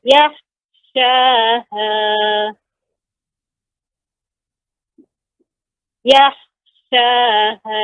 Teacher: Kha ini juga huruf isti'la. Kha huruf isti'la. sehingga ketika sukun dibaca dengan tebal.